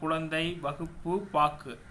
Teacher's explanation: அவ்வெழுத்துக்களின் சொல்லின் முதலிலும் இடையிலும் வரும்பொழுது முழுமையாக ஒலிக்கிறது. இறுதியில் வரும்போது ஒரு மாத்திரைக்கு பதிலாக அரை மாத்திரை அளவு ஒலிக்கிறது. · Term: குற்றியலுகரம்